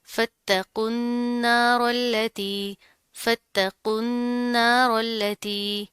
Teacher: रॉ मोटी पड़ी जाएगी और फिर इसको हम इस लाम के साथ मिला देंगे।